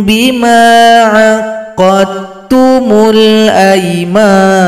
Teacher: pertemuan huruf dal dengan huruf ta, maka dalnya bergabung kepada huruf ta secara sempurna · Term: idgham mutajanisain